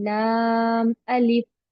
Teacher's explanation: अलिफ को बिल्कुल नहीं खींचते